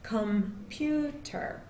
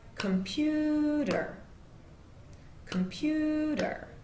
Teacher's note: computer has three syllables computer and the stress is on the second syllable on pew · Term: stressed syllable